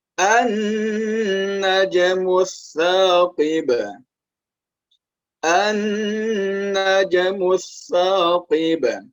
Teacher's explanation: huruf nun yang ada tasydidnya, maka dia dibaca dengan dengung.